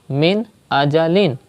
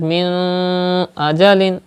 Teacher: So izhar will be done, gunna will not be done. That means when you pronounce this noon sakin, you will not take the sound into the nose.